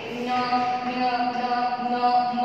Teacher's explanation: जैसे आप इनको बोलोगे ना ऐसा लगता है कि नाक से ध्वनि निकल रही है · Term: नासिक्य वर्ण